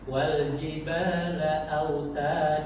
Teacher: mad thobi itu hanya dibaca dua harakat. Jangan dibaca lebih dari dua harakat atau kurang dari dua harakat.